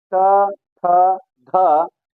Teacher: त वर्ग में आप मुख में दांत से आपकी जीवा स्पर्श होती है तो वो दंती वर्ण कहलाते हैं